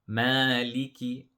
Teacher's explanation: So the mim also has a mad, we stretch for 2 harakat.